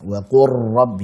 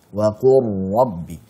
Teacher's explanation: Tapi kita alirkan karena memiliki sifat tawassut, dan juga getarkan dengan getaran yang halus, yang lembut. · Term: ra yang bertasydid